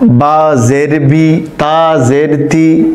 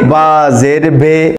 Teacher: জেরের উচ্চারণ হবে বাংলায় রস্বীকারের মতো